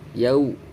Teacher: Suara wawu sukunnya itu bunyinya u bukan o. Yau, jangan yao.